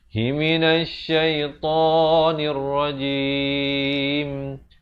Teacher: Di akhir dirapatkan mulut, menyempurnakan huruf mim.